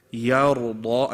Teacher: Ya is light, ra is heavy, and dad is heavy.